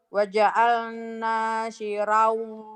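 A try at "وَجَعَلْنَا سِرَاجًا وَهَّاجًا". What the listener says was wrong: Jangan sirau, sirojau, sirojau. Waja'alna sirajau wahhaja.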